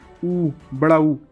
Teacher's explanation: दो होंठ से आवाज़ निकली, ऊ, बड़ा ऊ, ये क्या है? ओष्ठ स्वर है।